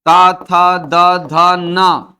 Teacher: त, थ, द, ध, न सब के सब दंत से उच्चारित होंगे